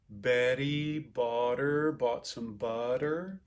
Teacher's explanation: this tapped r is the thing that americans do a lot of times for a t or a d sound between vowels